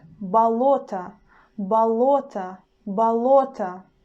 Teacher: the stress here is in the middle of the word and this o is pronounced very clearly as or and if